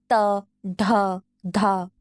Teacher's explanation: dental plosives है मतलब कि वो साउंड को प्रोड्यूस करते वक्त टंग जीभ जो होती है ऊपर के दांतों से टच होती है